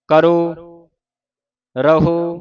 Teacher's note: ਜਿਥੇ ਹੋੜਾ ਉਥੇ ਇਨਾ ਮੂੰਹ ਨਹੀਂ ਖੁੱਲਦਾ